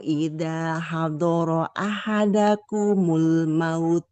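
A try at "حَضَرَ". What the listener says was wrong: Jadi, huruf dnya tebal.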